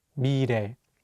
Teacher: the 리을 consonant is between the vowels E and 에, so it will have more of an R sound